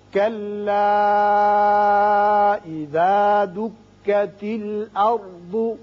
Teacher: کلا کے اوپر مد ہے چھوٹا مد مد منفصل 3 الف کھینچیے